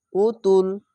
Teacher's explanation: পেশের পরে ও সাকিন এক আলিফ টেনে পড়বেন